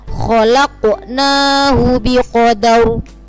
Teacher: Nah, roknya yang awalnya berharokat kasrotain karena diwakafkan menjadi sukun, maka itu rok sukunnya itu dibaca tafkhim atau tebal karena jatuh setelah harokat fathah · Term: rok tafkhim